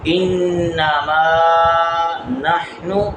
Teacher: إِنَّمَا یہاں پر غنہ اور ما نحن ما کو ایک الف کے برابر لمبا